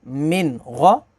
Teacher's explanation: मीम नून ज़ेर मिन, गौइन ज़बर गौ, मिन गौ। अब यहाँ पर नून साकिन के बाद अगला लेटर गौइन है, गौइन हरूफ़ हलकी है तो यहाँ पर इज़हार होगा